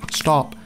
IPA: stap